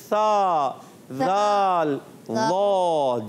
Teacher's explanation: ज़बान का सिरा और ऊपर सामने के जो दांत होते हैं, फ्रंट के सामने ऊपर वाले, उनके किनारों से अदा करते हैं तो अदा होता है सा, ज़ाल, ज़ा। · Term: हुरूफ़े लिसविया